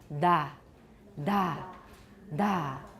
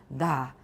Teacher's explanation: we've got voicing and we've got a lot of air coming out at the same time that's a breathy stop da that okay let's keep going the